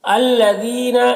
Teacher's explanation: الذین یہاں پر یا مدہ ہے 1 الف کے برابر کھینچیں گے